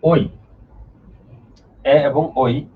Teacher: এগুলো উচ্চারণ যখন আমরা করি তখন কণ্ঠ এবং তালু এই দুইটার বরাবর থেকে উচ্চারণ করি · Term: কণ্ঠ তালু ধ্বনি